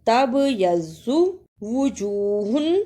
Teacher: با پر قلقلہ بھی کرنا ہے اور ضاد کو موٹا پڑھنا ہے۔ تبیض وجوہ، رکنے کی صورت میں وجوہ۔